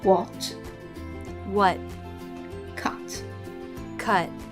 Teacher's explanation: in American English, they tend to drop the T in the final position.